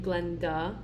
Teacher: the mid vowel is going to be central, and it's going to be a schwa, which is the sound, as in the end of my name, Glenda.